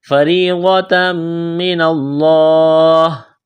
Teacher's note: فا کو جلدی پڑھیں گے بغیر کھینچ کے، را کو باریک کرنا ہے